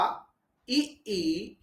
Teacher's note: जैसे ही आप इ ई बोले आपकी जीभ आई आगे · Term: अग्र स्वर